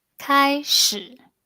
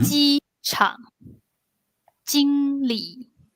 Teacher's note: We can have a situation where you have the first singing tone and then the third tone.